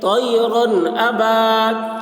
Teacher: طیرن ا، با، الف زبر با، الف سے پہلے زبر ہے، الف مدہ ہوا، اس لیے الف مدہ کو ایک الف کے برابر کھینچ کر پڑھیں گے